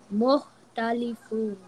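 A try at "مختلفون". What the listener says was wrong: Ya kha should be harder. Mukhtalifun.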